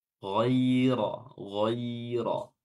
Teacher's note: setelahnya langsung ada ya sukun, ya, ya sukun, sehingga yang didahului oleh fathah sehingga dia memiliki sifat lin.